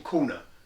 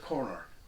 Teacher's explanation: dropping the post-vocalic R, saying Kona instead of corner